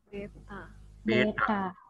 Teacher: Ta-nya ingat ya, retroflex ya.